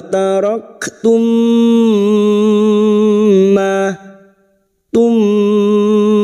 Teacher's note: Wataraktum, karena sekarang di sini kita wasal atau terus, mim sukun bertemu mim, idgham mimi. Bertemunya dua huruf mim, masuk pada huruf mim berikutnya disertai mendengung selama 3 harokat.